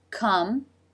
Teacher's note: for the K sound come with the as in butter and the lips close for the M consonant sound